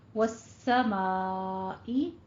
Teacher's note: والسمائی، وس سین کے اوپر آپ نے تشدید ادا کرتے ہوئے، لام شمسیہ ہے ہمارا تو آپ نے تشدید ادا کرتے ہوئے ما میں الف مدہ کے بعد ایک ہی کلمہ میں حمزہ آ رہا ہے تو یہاں پہ آپ نے مد متصل واجب ادا کرنی ہے